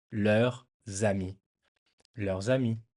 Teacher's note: So to pronounce it good, you just pretend that ami starts with a Z in your head. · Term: liaison